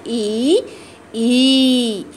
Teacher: इसकी ध्वनि जो है तालु से निकलती है तो तालव्य ध्वनि बोलते हैं इसकी ध्वनि को, और जीभ का मध्य भाग तालु को छूता है तो छोटी ई और बड़ी ई की मात्रा के का उच्चारण निकलता है।